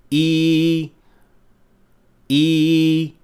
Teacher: but what is important here is the position of the tongue the middle of the tongue is raised almost all the way to the hard palate but without touching it